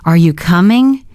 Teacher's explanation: Feel how your voice lifts up.